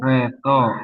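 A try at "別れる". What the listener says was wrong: Re apa? Ini mirip-mirip nih. Bukan to. Ini huruf apa? Di kelompok ra juga. Yes, kelompok ra juga ya. Wakareru, wakareru, gitu bunyinya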